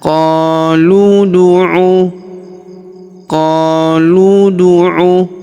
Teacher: Huruf qo kita panjangkan dua harakat karena terdapat alif di depannya.